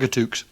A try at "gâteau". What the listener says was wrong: I mean, I don't mean to make you look like an idiot or anything, but I think you'll find it's gâteau. Yeah, the X is silent. Gâteau.